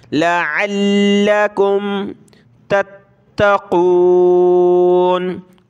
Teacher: قاف کو موٹا کریں گے، اس تا کو سخت کریں گے تشدید کی وجہ سے، تا، تا زبر تت، تا زبر تا، تت، قاف واو پیش قو نون زبرنا تتقون وقفن تتقون.